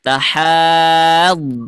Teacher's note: Ingat huruf dhad itu punya sifat yang namanya istitalah. Jadi ada suara panjang.